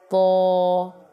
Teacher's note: تو کو منہ بھر کر پڑھنا، یہ حروف مستعلیہ میں سے ہے، اس کو پر کر کے پڑھنا۔